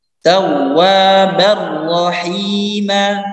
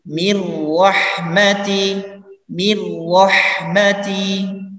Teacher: Jadi ketika nun sukun bertemu dengan lam dan ra ini langsung dibaca tanpa dengung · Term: idgham bila gunnah